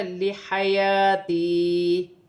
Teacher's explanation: یہاں پر یا الف مدہ بن رہی ہے اور یا مدہ بن رہی ہے، ایک ایک الف کی مقدار کھینچ کے پڑھا جائے گا